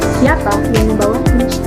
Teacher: Jadi pada kata siapa itu ee intonasinya tinggi, lalu ee sedang dan ee pada kata kunci turun. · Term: pola intonasi